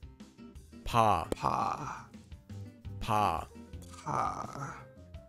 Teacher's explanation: It's between P and B, and is a bit softer.